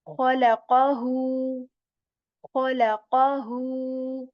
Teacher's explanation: I'm stretching the sound of who for two counts